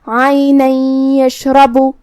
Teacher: عینا یشربو، کلمت یشربو میں یہاں حرف الشین کا دھیان رہے، را پہ زبر ہے تو را کا حکم ہے تفخیم، ہم را کو بھاری آواز میں پڑھیں گے